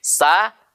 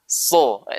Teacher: Kalau sin itu dibaca tipis, kalau so dibaca tebal.